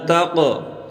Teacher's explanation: قاف کو موٹا کریں، قاف پر قلقلہ کریں